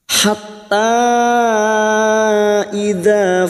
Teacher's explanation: bertemunya Mad dengan Hamzah di lain kalimat Mad Jaiz munfasil lima harakat kita panjangkan